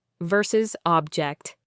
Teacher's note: Stress on the second syllable, verb, to disagree or protest.